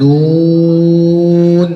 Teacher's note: জিব্বার আগা আর বরাবর উপরে তালুর সঙ্গে লাগাইয়া নুন উচ্চারিত হয়